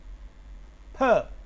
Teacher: ये आवाज़ वॉइसलेस है चूँकि इसमें वाइब्रेशन नहीं है